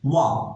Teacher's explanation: ওয়ার উচ্চারণ তাড়াতাড়ি করতে হবে, ঠোঁট গোল করে ওয়া বলতে হবে।